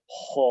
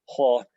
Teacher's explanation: This pharyngeal H, it's not like an English H, but ho, it's a pharyngeal ho, and it's really a guttural H